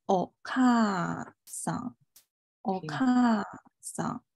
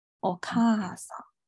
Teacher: 那个咔你明显从上往下咔咔啊下来了，你把音调又读出来了，然后把它的这个长音也读出来了